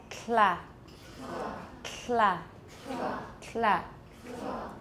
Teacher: All right, so make a T and don't lower your tongue. Keep your tongue tip on your alveolar ridge to make the L, and there will be aspiration as well. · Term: lateral release